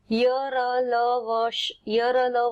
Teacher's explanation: इनमें जीहा पूरा स्पर्श नहीं करती है · तो जिह्वा जो है हमारी ये पूरी तरह से स्पर्श नहीं करती, केवल थोड़ा सा रगड़ खाती है। स्पर्श करते समय थोड़ा सा स्थान शेष रह जाता है, अतः ये स्वर तथा व्यंजन दोनों के बीच का वर्ण है। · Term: अंतस्थ, अंतःस्थ